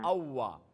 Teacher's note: আচ্ছা ওয়ার মাখরাজ দুই ঠোঁট গোল করিয়া দুই ঠোঁট গোল করলে ওয়াও দুই ঠোঁট গোল রাখিয়া ঠোঁট মিলে না জি, ওয়াও মিলে না।